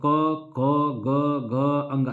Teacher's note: जब आप बोलेंगे ना तो आपके गला से आवाज निकलेगा, ये हमारा क्या होता है कंठ।